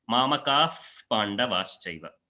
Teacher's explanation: that Visarga is called as the Upadhmaniya, and the place of origin is the lips